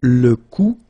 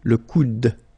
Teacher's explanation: you don't insist on this final e, it only gives you the sound of d at the end.